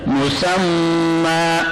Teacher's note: میم پیش مو، سین میم زبر سم، میم 2 زبر مم، مسمن. 2 زبر میں جب وقف کریں گے تو وقف بالابدال ہوگا، 2 زبر 1 الف سے تبدیل ہو جائے گا